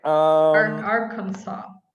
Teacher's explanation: You drop the S, the last S.